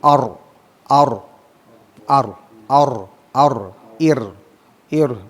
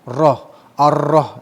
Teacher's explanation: Jadi ada ro-nya, ada takrirnya, ada getarannya, ada ulangannya.